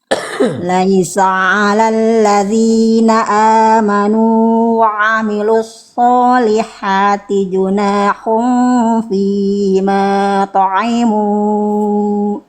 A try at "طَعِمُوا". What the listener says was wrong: Oke, kalau Bunda mau berhenti di to'imu, dibacanya berapa harokat mu-nya? Tadi Bunda masih serasa ada alisnya. Misalnya teman-teman yang nonton, Bang, Ustadz, Kang, Mas, kenapa mu-nya nggak boleh dibaca panjang banget? Kan ini ada alis. Alis ini disebut dengan tanda mad, tanda panjang, lebih ekstra lagi panjangnya.